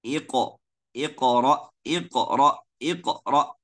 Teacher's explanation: makhraj Hamzah sukun cuma kita tutup dua pita suara secara lengkap